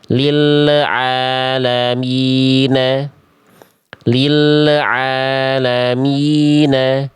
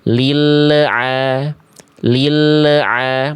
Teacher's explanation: Kedengeran nggak bunyi lamnya ada bunyi le di ujung pelafalan l. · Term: memantulkan suara